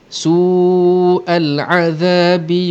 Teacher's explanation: waw mad bertemu dengan hamzah dalam satu perkataan, hukumnya mad wajib muttasil, kita panjangkan 4 harakat ataupun 5 harakat